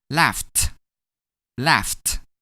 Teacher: When we add -ed to “laugh”, we’re gonna pronounce it as laughed [t], laughed [t].